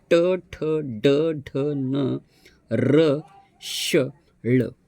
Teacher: मूर्धा म्हणजे ताळू आणि कंठ या मधला भाग ज्या वेळेला प्रभावित होतो त्याला मूर्धन्य वर्ण म्हणतात